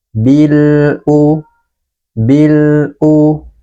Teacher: dengan huruf hamzah huruf hamzah adalah salah satu huruf Qariah maka huruf lam sukun ini harus kita baca dengan jelas dan sebagian suaranya kita alirkan